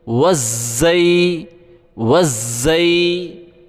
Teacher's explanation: واو کو ہم زا کے ساتھ ملائیں گے، زا کے اوپر تشدید ہے، تشدید والے حرف کو سختی کے ساتھ پڑھا جاتا ہے۔